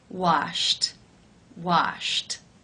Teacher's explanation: The final sound in infinitive form is sh, the unvoiced sh sound. Since it is unvoiced, it is case 1, where the ed is pronounced as a t.